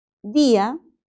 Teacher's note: en la palabra día encontramos un hiato acentual porque la I suena más